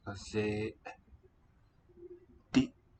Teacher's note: Two long vowels with glottal stops.